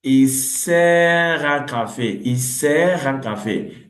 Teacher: So the last pronounced consonant is linked to the other word that begins with the vowel. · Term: l'enchaînement consonatique